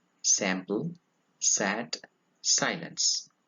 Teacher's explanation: It is a voiceless alveolar fricative.